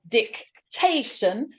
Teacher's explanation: dictation, the stress is on te, it goes in the middle.